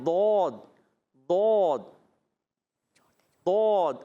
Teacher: زبان کی کروٹ اور اوپر کے داڑھوں کی جڑ سے ادا ہوتا ہے